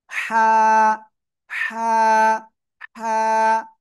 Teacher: গলাটা চেপে হালকা মুখ দিয়ে বাতাস বের করে এক আলিফটা নিয়ে উচ্চারণ করব।